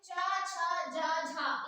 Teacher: चा छा जा झा, इन चारों को स्पर्श संघर्षी कहते हैं